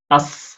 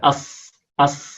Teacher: الصاد التي كالسين يعني أنك تنطق صادا مرققة، أص هكذا، أص أص، هذه صاد كالسين.